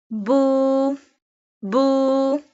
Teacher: This sign is sakina. When we add vaw sakina with bu, we stretch it a little bit, up to two harkat. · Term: vaw madda